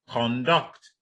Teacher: Then when you have the other one, conduct, the stress is on the second syllable